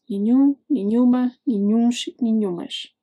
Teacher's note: The strong part is actually the end, except the end is nasal. That final M isn't really an M sound. It's there to make the vowel nasal, like a nasal U. And nasal endings are harder to hear, so the whole word feels like it fades out.